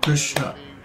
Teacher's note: the word Krishna is only two paas long because each of the vowels in Krishna is a short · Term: short syllable